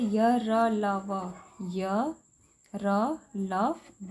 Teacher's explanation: इनका उच्चारण जीभ से, तालु से, होठों को सटाने से होता है। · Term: अंतस्थ व्यंजन